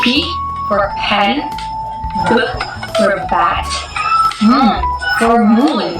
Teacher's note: it is produced using both lips together.